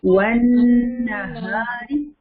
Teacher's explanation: नून के ऊपर गुन्ना करेंगे ना